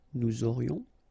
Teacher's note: Nous aurions, final S not pronounced, and then you get this liaison, nous aurions.